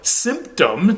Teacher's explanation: notice that the N has assimilated to the following P which is a sound you make with your lips so it becomes Sim instead of sin